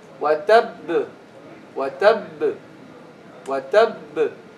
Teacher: The ba with shadda is two ba, one merged into the other. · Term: the merged ba